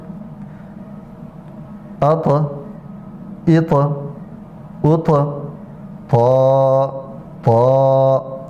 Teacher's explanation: حرف طا میں صفت تفخیم یعنی موٹا اس کو پڑھیں گے، پور کر کے پڑھیں گے، اور صفت کلکلہ یعنی اپنے مخرج میں اس کو بھی حرکت دیں گے، تھوڑی سی جنبش دیں گے۔